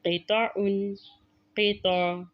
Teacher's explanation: قطع میں آپ نے دیکھا کہ آخری حرف عین ہے، عین کے تنوین کو ہم ختم کر دیں گے لیکن عین کو ہم واضح کریں گے